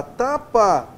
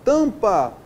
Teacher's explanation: Quando eu falo a palavra tapa, eu tenho aqui uma vogal oral. Quando eu falo a palavra tampa, o A e o M é uma vogal nasal.